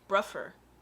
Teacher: you can change the TH to the F sound, which is bruffer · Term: TH fronting